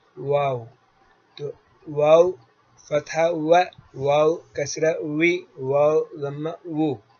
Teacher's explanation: واو کا مخرج ہے دونوں ہونٹوں کے نا تمام ملنے سے واو نکلتا ہے، اور اس کی صفت جہر و رخوت، استفال و اسمات اور انفتاح ہے.